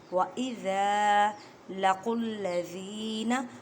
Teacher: قوف کو ادا کرتے وقت خیال رکھیں کہ کاف کی آواز نہ آئے کیونکہ یہ حروف مستعلیہ یعنی موٹے حروف میں سے ہے